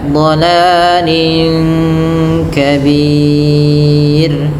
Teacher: Dolalin ketemu kaf ikhfa hakiki dibaca dengan samar. Bukan lagi dolalin kabir tapi dolalin ya dolalin kabir.